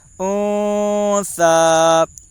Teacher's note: کھڑا زبر برابر ہوتا ہے الف مدہ کے، اس لیے کھڑا زبر کو ایک الف کے برابر کھینچ کر پڑھیں۔ · نون ساکن کے بعد حروف اخفا کے 15 حرفوں میں سے ثا ہے، اس لیے نون ساکن کا اخفاء حقیقی ہوگا